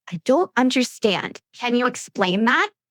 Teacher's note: stress understand and explain